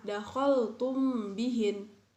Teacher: mim mati bertemu dengan huruf ba, jadi dibacanya samar-samar.